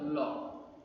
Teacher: जो हमारा ल होता है वो पार्श्विक है ना, पार्श्विक वर्ण कहलाता है।